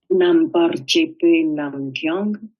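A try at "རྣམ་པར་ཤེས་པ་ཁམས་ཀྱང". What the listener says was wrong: Redis, parce que tu as zappé le Kang. Vas-y.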